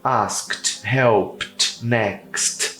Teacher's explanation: não tem I no final de nenhum dos três não tem i é um som seco